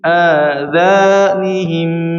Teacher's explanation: adzanihim itu hamzahnya 2 harakat, a-nya 2 harakat ya apa? Dzanya juga 2 harakat.